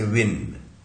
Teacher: bilabial sound है, दोनों ओठों से बनता है ये व